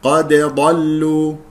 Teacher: دال مقلقله قلقله صغرى ضل ضاد مفخمه مرتبه ثانيه القاف مفخمه مرتبه ثانيه لان مفتوحه